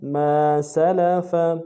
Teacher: میم کے ساتھ الف مدہ ہے، 1 الف دار میں کھینچیں گے، سین لام فا ان تینوں کو نرم سے ادا کریں گے.